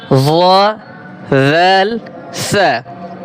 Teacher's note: জিহ্বার 13 নম্বরে জিহ্বার আগা সামনের উপরের 2 দাঁতের আগার সঙ্গে লাগিয়ে 3টি হরফ উচ্চারিত হয়